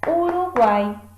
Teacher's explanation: Aqui nós vamos ter um caso chamado de tritongo, aonde, aqui no final, nós vamos ter o U, o A e o I, todos pertencentes à mesma sílaba